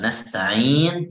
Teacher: nasta'in itu berhenti 2 harakat, boleh 4 harakat, boleh juga 6 harakat